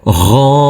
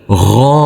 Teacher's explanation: Huruf ghain kita baca dengan panjang 2 harokat. Karena di atasnya ada huruf alif kecil yang berdiri tegak lurus.